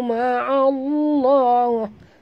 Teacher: Ma'allah sini masukkan bunyi ain terus ke dalam lam disertai njud, dan lam di tengah-tengah. Lam pada lafaz jalalah dibaca tebal kerana ain ini berbaris di atas